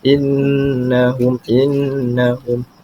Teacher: dibaca dengan keadaan didengungkan sebanyak dua harakat